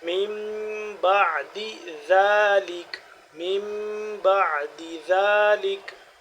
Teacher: ذال کو نرمی سے تھوڑا سا لمبا ہوگا